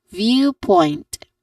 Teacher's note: All in all, the word is viewpoint. Stress on the first.